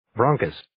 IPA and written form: 'brɑːŋkəs (Bronchus)